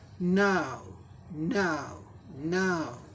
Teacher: Mixture of आ ऊ sounds, ये symbol diphthong. NOW, न आ ऊ, नाउ, नाउ, नाउ, अभी, नाउ, नाउ कहेंगे।